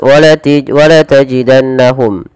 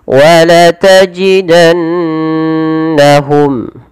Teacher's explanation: harus dibaca dengan bacaan yang kita namakan dengan gunnah, yaitu sembari menahan memasukkannya ke rongga hidung